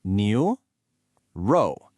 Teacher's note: It's a rising second tone on neo and then a falling fourth tone on row. New row. The second challenge, and this one's a bit tougher for English speakers, is that initial sound in row.